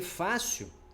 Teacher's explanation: fácil a sílaba tônica é a penúltima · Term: paroxítona